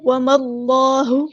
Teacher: اللہ کا جو لام ہے یہاں پہ پر ہیوی ادا ہوگا کیونکہ اس سے پہلے فتح یعنی زبر آئی ہے